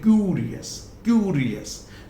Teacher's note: सो क्यू, क्यू ये stressful है